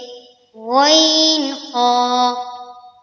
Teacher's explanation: হলকের শেষ হইতে